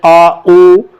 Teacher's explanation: पश्च स्वर, जिसमें जीभ पीछे टकराती है। जैसे आप कहते हैं आ उ, तो जीभ आगे नहीं पीछे टकराती।